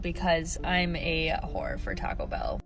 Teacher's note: So you got a person with a woman's voice going through the drive-thru and calling themselves a whore with vocal fry